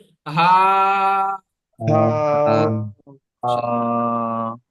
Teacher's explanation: হাকে একালি পরিমাণ টান দিয়ে পড়তে হবে